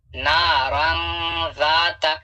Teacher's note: یہاں پہ تنوین کا اخفا ہوگا کیونکہ تنوین کے بعد ذال ہے اور ذال حروف اخفا میں سے ہے